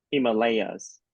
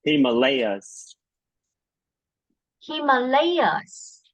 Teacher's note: you should stress on the third syllable